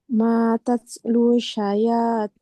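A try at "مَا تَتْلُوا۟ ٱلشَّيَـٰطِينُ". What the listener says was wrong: Gak panjang. Mata lusyayatin.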